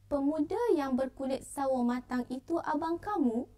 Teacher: Ayat ini biasanya diucapkan dengan nada atau intonasi suara meninggi pada akhir ayat.